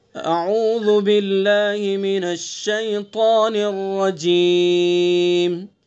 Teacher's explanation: اللہ کے لام سے پہلے زیر ہے تو اس لیے اللہ کے لام کو باریک پڑھیں گے